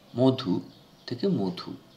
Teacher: ধয়ের সঙ্গে যে স্বরধ্বনি যুক্ত রয়েছে উ, সেই উ স্বরধ্বনি পূর্ববর্তী অকে পরিবর্তন ঘটালো তার, এবং তা পরিণত হলো কিসে? ওতে। অর্থাৎ পরবর্তী স্বরের প্রভাবে পূর্ববর্তী স্বর পরিবর্তিত হলো। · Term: পরাগত স্বরসঙ্গতি